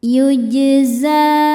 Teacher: Za hukumnya mad thobi'i muqaddar. Sebab huruf zai berharakat fathah panjang. Cara bacanya zai ini panjang dua harakat. · Jim sukunnya dihukumi qalqalah sughro. Sebab jim sukun asli dan ada di tengah bacaan. Cara membacanya dipantulkan. dengan pantulan yang kecil.